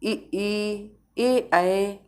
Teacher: इनके उच्चारण में होठों की आकृति अवृत्ताकार होती है, मतलब वृत्त नहीं बनता है ए ऐ में, तो ये अवृत्ताकार हो गए।